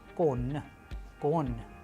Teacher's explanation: Soft sign, it doesn't have its sound, it softens the preceding consonants.